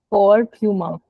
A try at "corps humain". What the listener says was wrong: I don't sound the P at all. Corps humain. Corps humain.